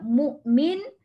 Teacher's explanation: Itu nak wasal Tapi kalau nak waqafnya mu'min, apa yang kita kena jaga hamzah tu. Hamzah kalau sukun, hamzah mati bukan bunyi ain mu. Jangan jadi bunyi ain ya, mu M-U-K.